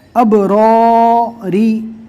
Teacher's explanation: رو کے نیچے زیر آوے تو رو کو باریک پڑھا جاتا ہے